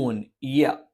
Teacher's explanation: യ നാവിന്റെ മധ്യഭാഗം മേലെ അണ്ണാക്കിൽ സ്പർശിച്ചുകൊണ്ടാണ്